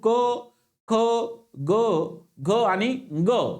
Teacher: पाच स्पर्श व्यंजने आहेत तर यांचा समावेश कंठामध्ये होतो